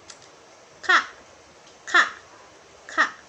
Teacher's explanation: Bunyi K dihasilkan ketika lidah bawah menyentuh langit-langit lunak atau velum.